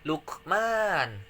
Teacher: Luqman yaitu qalqalah sugro karena ada qaf yang sukun.